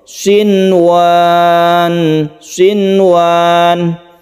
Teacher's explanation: di dalam kata-kata sinwan ini kita baca jelas nunnya dan tidak didengungkan, kemudian tidak dimasukkan ke waw